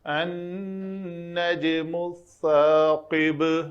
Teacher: النجم الثاقب، یہاں پہ دیکھیں جب میں یہاں پہ آیا، جیم پہ قلقلہ کیا، نون پہ غنہ کیا، میم کی پیش کے بعد یہ سا پہ آیا، تو سا کے لیے میں نے زبان کو تھوڑا باہر نکالا تاکہ سین نہ بنے۔